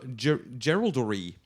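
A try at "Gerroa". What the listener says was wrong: A slight problem of emphasis on the wrong syllable.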